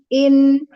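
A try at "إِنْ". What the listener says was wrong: Ya, jangan dipisah. In, ngalir aja. In, jangan dipisah.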